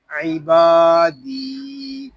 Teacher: عی، با الف زبر با، عیبا، دال یا زیر دی، عبادی، یہاں دال کو ہم ایک الف تک کھینچ کر پڑھیں گے کیونکہ یہاں یا مدہ ہو رہا ہے